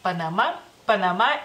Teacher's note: ustedes la última A la pronuncian como un poquito más larga, nosotros como un poquito más corta, pero creo que la diferencia es muy mínima en este caso, así que Panamá es Panamá, Panamá y es en femenino.